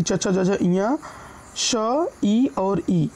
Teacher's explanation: ये तालु से बोले जाते हैं, जिसके कारण इन्हें हम तालव्य वर्ण बोलते हैं